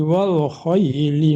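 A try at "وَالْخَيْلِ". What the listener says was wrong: Wal khailil. Tadi lamnya nggak ada dimatikan. Wal khailil, bukan wal khaili ya. Wal khailil.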